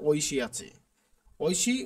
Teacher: উচ্চারণের ক্ষেত্রে ঐ বা এর কার থাকলে এর উচ্চারণ ওই বা ওই হয়ে যায়